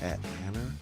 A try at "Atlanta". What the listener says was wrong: See, you close your mouth, and I can't tell if you're saying Braves or Hawks.